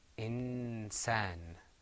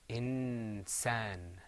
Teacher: because the seen is pronounced in a close place next to the noon, this hukm here is called ikhfa